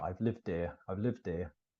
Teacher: you can hear the D becoming part of here